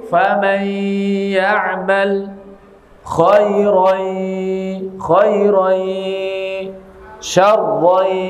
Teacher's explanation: Maka harus disertai suara dari rongga hidung. Famay, enggak boleh ditekan.